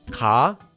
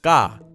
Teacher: The first one ca is pronounced normally as we've already learned. The second one is pronounced by slightly tensing your voice before saying the consonant. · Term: double consonant